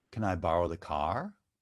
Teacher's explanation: this is a question that has a yes or no answer so it's rising intonation